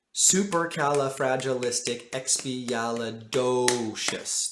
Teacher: That do is longer than the rest of all the other syllables. It's twice as long. It takes up 2 beats.